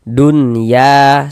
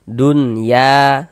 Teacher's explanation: Karena dia izhar maka dibaca jelas. Jadi huruf nun sukunnya kita baca jelas. Jangan didengungkan, dibaca pendek saja. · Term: izhar mutlak